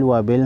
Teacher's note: با کو ہلا کر پڑھیں گے با حروف قلقلہ میں سے ہے